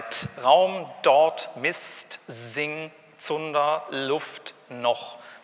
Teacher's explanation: Das ist alles dasselbe, immer am Zahndamm.